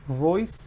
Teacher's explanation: there is no z sound in it